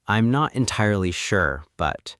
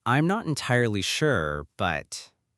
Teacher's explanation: In English, when we want to signal that more information is coming or that we are open to further discussion, we use a slight rising intonation at the end of the clause